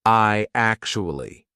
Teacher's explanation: What we're going to put in the middle is we're going to put a Y sound. So it becomes I actually.